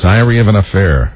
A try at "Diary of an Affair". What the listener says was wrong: It almost sounded like you said diarrhea. Diarrhea of the affair.